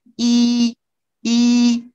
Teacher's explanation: when you say the vowel e, notice that you're using the blade of your tongue or the front part of your tongue. E, e, you use the front part of your tongue.